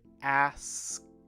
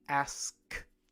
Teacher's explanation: You hear the K sound and the T sound right next to each other, right?